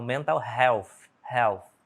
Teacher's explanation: de R portanto Health lembrando a gente faz essa diferenciação porque na língua portuguesa o h ele não tem som na língua inglesa tem então ele vai ter som de R